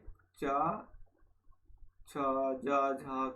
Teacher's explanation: उच्चारित करते समय जिह्वाग्र और तालु के मध्य स्पर्श व संघर्ष होता है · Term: स्पर्श संघर्षी